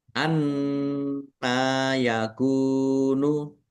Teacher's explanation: Nun tasdid dibaca gunah atau mendengung, ditahan biar tampak mendengung. Nun fathah berdiri, mat tobi'i, kaf domah, wawu sukun juga mat tobi'i, panjang 2 harokat.